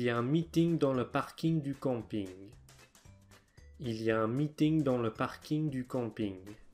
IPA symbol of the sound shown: ŋ